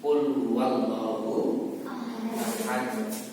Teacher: Berhenti. Maka huruf dal ini nanti dibaca mantul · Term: huruf qalqalah